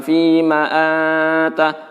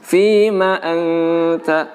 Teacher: Jadi nun mati bertemu ta, nunnya didengungkan, huruf ta-nya dibaca juga dengan jelas.